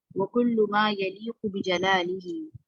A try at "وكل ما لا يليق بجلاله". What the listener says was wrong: لا مس ہو گیا تھا پچھلی دفعہ. اسی طرح المبرأ من النقائص یا المبرأ من النقائص، باقی ٹھیک ہے ماشاء اللہ.